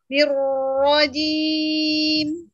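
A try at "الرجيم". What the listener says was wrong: Kelamaan ruaknya. Nirrajim. Kelamaan. Nirrajim. Langsung. Nirrajim. Ngalir. Nirrajim. Jangan arwajim. Arwajim. Langsung. Arwaji. Arwaji.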